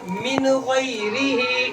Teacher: نون ساکن کے بعد حروف حلقی میں سے غین آ رہا ہے تو اظہار ہوگا، جلدی سے پڑھیں گے۔